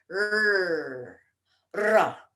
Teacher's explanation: in Sanskrit, we have a Ra, which is a consonant, but we also have a R, which is a vowel. They're very close.